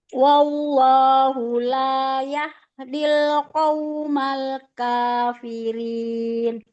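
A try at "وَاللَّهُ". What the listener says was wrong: Jangan wallah. Wallah. Jadi nggak ada bunyi waw dua. Jadi langsung ke L, tapi tebal. Itu kalau wallah seakan-akan setelah huruf waw ada waw lagi.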